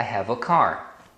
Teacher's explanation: quando você fala isoladamente ou quando você tá sendo enfático tá na fala normal as pessoas reduzem essa pronúncia Então o a que você pronunciaria ei na verdade eles pronunciam como um A então quando você fala normalmente por exemplo I have a car